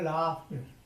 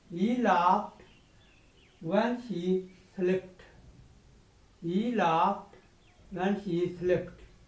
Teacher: जब ये एफ जो है आपको पता है ये वॉइसलेस है, वॉइसलेस होता है तो आखिर में हम टी लगाते हैं